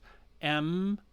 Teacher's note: the two lips kind of coming together and creating a buzz